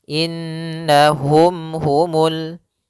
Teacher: nunnya berharokat tasydid, maka kita namakan dengan bacaan gunnah. Maka kita tahan dulu suara nunnya. Baru dibaca na.